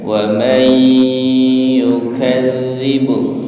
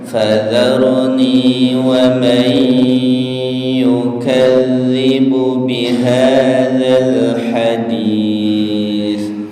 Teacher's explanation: nun ketemu ya, idgham bi gunnah ya. Idgham bi gunnahnya ditahan sebentar.